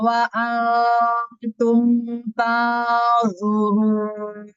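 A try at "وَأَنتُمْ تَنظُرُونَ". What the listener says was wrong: Hati-hati ro-nya ya. Ro-nya suka masih ke maju tuh sedikit. Terus ro. Jadi baca ro itu misalnya kita bilang kayak roda gitu. Ininya nggak gerak. Roda. Roda. kaca, bagian ujung kiri sama ujung kanan nggak boleh gerak. Kalau bibirnya oh, katanya kayak bergerak-gerak, iya kalau itu pasti bergerak. Cuman roda, seharusnya tuh sama ujungnya.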